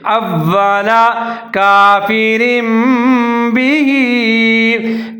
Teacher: واو کی آواز کو ڈبل کر کے پڑھیں گے، ادغام کریں گے